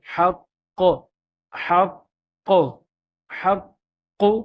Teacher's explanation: قاف ہے مشدد ہے، تو اس کو ہم زیادہ ٹھہراؤ کے ساتھ اور زیادہ خوب قلقلہ کر کے پڑھیں گے